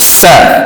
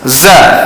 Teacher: Dia sa desir dengan berangin. Kalau za desir tidak berangin, jahar.